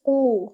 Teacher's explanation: It's O, okay? O, and it should be given two counts because it is with Waw Maddiya